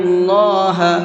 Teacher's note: اللہ کے نام کو منہ بھر کے پڑھیں گے، اس لیے کہ اللہ کے نام سے پہلے پیش ہے، اور اللہ کے نام سے پہلے پیش ہوتا ہے تو اس اللہ کے نام کو منہ بھر کے پڑھتے ہیں۔